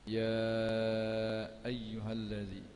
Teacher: ya dibaca dengan 4 atau 5 harakat, mak wajib muttasil